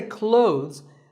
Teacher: silent here well first of all this word is not cloths when we say clothes the th in the middle can often be silent